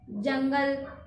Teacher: अनुस्वार वाले शब्द है जब हम पढ़ते हैं तो उसका आवाज जो है, साउंड जो है, ध्वनि जो है नाक से आता है